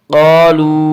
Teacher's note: واو مدہ کو ایک الف کے برابر کھینچ کر پڑھیں گے۔